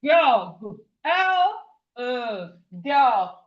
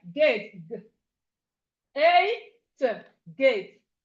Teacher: When you're pronouncing this sound, there's a vibration in your throat. G. When you put your hand, when you put your when you put your hand, you go GG.